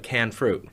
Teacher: Northwest natives sometimes drop the ending ed. So when you say things like canned fruit, a lot of the time it comes out here like canned fruit, where it's now switched from being a past participle modifier, ed, to being a noun modifier without the ed on it.